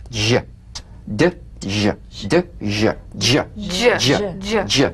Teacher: It's a combination of the D drum beat and the ZH. So place the tongue on the upper gum ridge for the D, then let the tip peel down for the ZH resonance.